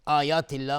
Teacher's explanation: من آیات الله باز اظهار حلقی چون نون ساکنش به همزه اومده. آیات الله مد بدل هست، به مقدار دو حرکت کشیده میشه. آیات الله لفظ جلاله ترقیق است چون قبلش کسره اومده.